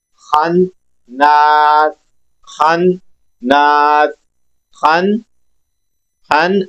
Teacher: اس خا کو نون کے ساتھ ملانا بھی ہے اور نون ادا بھی کرنا ہے۔ خن ناس، خن ناس، خن، خن آگے نون کے ساتھ الف مدہ کریں گے، خناس، خناس۔ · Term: نون مشدد